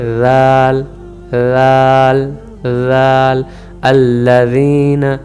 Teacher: زبان کی نوک اور دانت کا کنارہ, اوپر والے سامنے والے دانت کو کنارہ, نوک کو وہاں پہ ملائیں گے